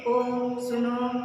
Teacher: इन स्वरों के उच्चारण में ह्रस्व स्वर से तिगुना यानी 3 गुना समय लगता है, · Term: प्लुत स्वर